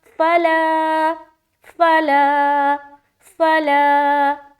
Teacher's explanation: تو اس زبر کو ہم نہیں کھینچیں گے کیونکہ یہ صرف زبر ہے، اور اس زبر کو ہم کھینچیں گے کیونکہ اس کے ساتھ الف لگ کر آ رہا ہے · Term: الف مدہ